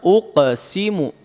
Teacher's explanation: Qalqalah qafnya jangan dipantulkan ke dhammah. Lepas netral biasa. Uqsimu. Iya, tebal, tapi lepas posisi netral bibirnya, jangan dibiarkan uqsi ya.